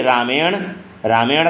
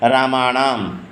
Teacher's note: ट, ठ, ड, ढ का अंतिम जो न होता है ण, उसको ना कह के ण कहते हैं